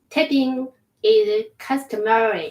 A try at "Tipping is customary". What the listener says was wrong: There's no A here.